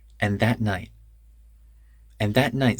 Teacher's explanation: and that night the D in and connects to th and the T in that becomes a glottal stop